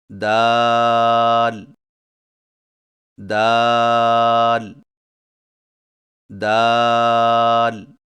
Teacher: دال کی ادائیگی میں زبان کی نوک کو سامنے والے اوپر کے دو دانتوں کی جڑ سے لگا کر باریک آواز میں پڑھیں، یعنی دال دال دال.